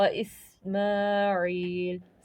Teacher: ما پہ کھڑی زبر ہے جسے ہمیں ایک الف کے برابر کھینچنا ہے · سین ہمارا سیٹی والا حروف ہے